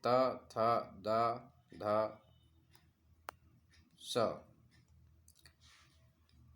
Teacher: जिन व्यंजनों के उच्चारण में जिह्वा की नोक ऊपरी दांतों का स्पर्श करती है उन्हें दंत व्यंजन कहते हैं